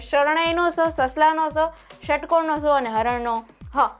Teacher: પછીનું જોઈએ તો કે ષ ષ ષ અને હ ના ઉચ્ચારણમાં મુખના અવયવો હવાને રોકતા નથી પણ સાકડા માર્ગમાંથી પસાર કરે છે આથી તે ચાર વ્યંજનો કેવા છે તો કે સક્ષી વ્યંજનો છે.